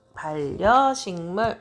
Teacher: 비음 영향을 받아서 이응으로 바뀌었어요. 반려식물 이렇게 바뀝니다.